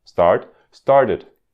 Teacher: tem que ouvir o E para ouvir o simple past